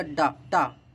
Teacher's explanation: जो टा वर्ग आपका होता है वो मूर्धन्य होता है, ये दंत नहीं होता है